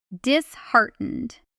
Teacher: The stress lands on the middle syllable on the word heart hiding inside it. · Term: stress pattern